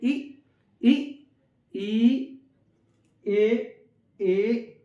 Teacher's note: अग्र जीभ में, जीभ के अग्र भाग से इनका उच्चारण हो रहा है। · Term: अग्र स्वर